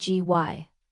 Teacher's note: The related noun strategy is strategy, with stress on the first syllable